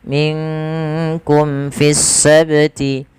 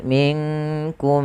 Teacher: Maka ketika kita membaca izhar syafawi, suara mimnya harus dijelaskan, tidak boleh ditahan. Minkum fisti, tidak boleh minkum.